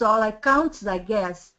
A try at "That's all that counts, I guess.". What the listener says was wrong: Okay, that was very good, except you missed the TH, which is possible, but I want you to keep it. That's all that counts, I guess.